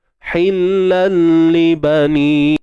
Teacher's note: Idgham maksudnya memasukkan ataupun menggabungkan bunyi tanwin ke dalam lam. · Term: idgham bila gunnah